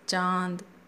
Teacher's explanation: चंद्रबिंदु के प्रयोग में नाक व मुंह दोनों से ध्वनि निकलती है या हवा निकलती है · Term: अनुनासिक